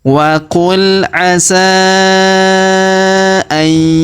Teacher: Huruf nun sukun bertemu huruf ya yang berharokat tasdid, maka nun sukunnya melebur masuk ke huruf ya yang berharokat tasdid ini. Kita tahan dan kita dengungkan 2 sampai 3 harokat.